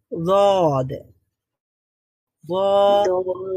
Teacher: জিহ্বার যে কোনো একটা পার্শ্ব বা সাইড, উপরের যে কোনো একটা পার্শ্বের দাঁতের গোড়ার সঙ্গে লাগিয়ে উচ্চারিত হবে রদ